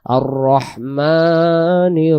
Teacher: মিমের জবরটাকে আমরা এক আলিফ টেনে পড়বো